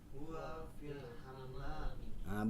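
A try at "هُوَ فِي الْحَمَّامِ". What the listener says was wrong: bukan hamam. Kalau hamam itu nama burung ya, tapi hammam ya, hamam itu nama burung ya, sejenis burung. Huwa fil hammami.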